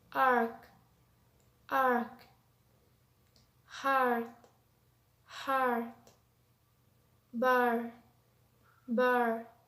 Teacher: this is a long sound and its horizontal position is central and its vertical position is low